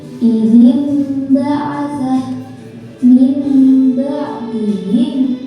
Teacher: Dibaca iqaf apabila ada atau tanwin bertemu dengan huruf ba. Cara membacanya suara nun mati atau tanwin diganti dengan suara mim. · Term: Iqlab